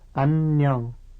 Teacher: when two N sounds come one after the other like this, they are pronounced separately, the first at the end of the first syllable and the second at the beginning of the next syllable